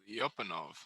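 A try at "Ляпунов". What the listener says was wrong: So the key to pronouncing Russian words like a Russian as opposed to like an American is that you have to put the emphasis on the second syllable, not the first. So you got to put the emphasis on the p, not the li.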